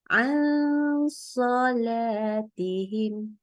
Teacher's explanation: dengungnya tebal. Jadi pangkal lidahnya sudah naik waktu bacaan baca nunnya.